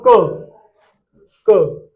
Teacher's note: मुख से हवा कितनी निकली है? बहुत ही कम। अल्पप्राण। · अगर बोलते समय मुख से हवा बिल्कुल नाम मात्र निकल रही है, अल्पप्राण ज्यादा निकल, जैसे यहां पर देखो, उच्चारण करो, क, मुख से हवा कितनी निकली, बहुत ही कम, अल्पप्राण